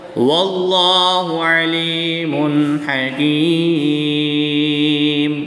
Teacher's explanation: یا ساکن سے پہلے لام کے نیچے زیر ہے تو یا مدہ ہوگا، ایک الف یعنی 2 حرکات کے برابر کھینچ کر پڑھیں گے